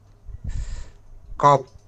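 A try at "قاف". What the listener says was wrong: কফ শেষে ফা আছে, কফ, কাফ, কাফ,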